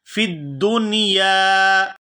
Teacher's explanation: یا کو الف مدہ کی وجہ سے کھینچ کر ادا کیا جائے گا